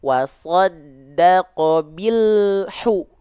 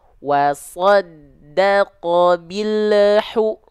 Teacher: di ujung pelafalan ada bunyi konsonan Al jangan sampai ada bunyi vokal e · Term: lam sukun